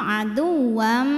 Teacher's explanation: maka tanwinnya masuk ke mim aduwam dan bunyi m-nya tahan sampai ada suara masuk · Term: idgham bunah